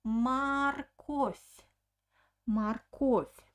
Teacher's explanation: the second o is stressed so i pronounce a very clear o marcos but the first o doesn't have an accent i pronounce it like ah